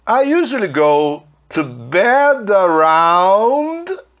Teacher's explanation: dá para a gente emendar e fazer, em vez de falar bed, around, fala bed around, juntando o D com A